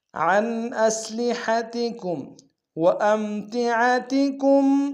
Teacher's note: عین کو گہرائی سے ادا کریں گے، اور کم میں میم ساکن غنہ کریں گے